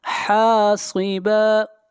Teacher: صاد کو موٹا پڑھیں گے، صاد حروف مستعلیہ میں سے ہے